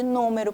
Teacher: se eu tenho a antepenúltima sílaba mais forte então a terceira de trás para frente ela é a sílaba tônica eu digo que é uma proparoxítona então é o caso de